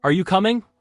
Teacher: Voice goes up on coming. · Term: rising inonation, rising intonation